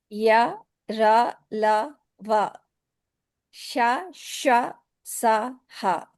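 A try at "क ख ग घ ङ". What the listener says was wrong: Good job.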